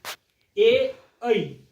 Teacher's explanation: कंठ तालव्य, कंठ और तालु का मेल से इन वर्णों को हम लोग बोल पाएंगे